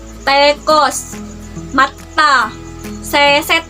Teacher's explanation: Termasuk bunyi apiko alveolar karena dihasilkan dengan ujung lidah dan lengkung kaki gigi.